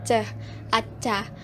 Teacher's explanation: Fonem C dengan cara artikulasinya plosif dan tempat artikulasinya di palatal atau langit-langit keras